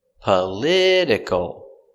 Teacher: Stress is on the second syllable. Political. And for that reason, we change the T to the D sound in this word.